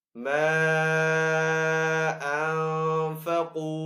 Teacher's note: الف مدہ کے بعد اب حمزہ جو ہے دوسرے کلمے میں آ رہا ہے تو یہاں پہ جو مد بنے گی وہ مد منفصل ہوگی. مد منفصل کو ہم 3 سیکنڈ کھینچ کر ادا کریں گے